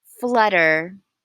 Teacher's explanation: it's where the T sound becomes almost a D sound between voiced sounds or intervocalic ly as we say and I have highlighted them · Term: English flap